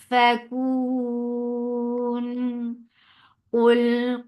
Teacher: قاف is heavy for Dhamma, circle lips attached with lam, lam will get sifa of tawassut.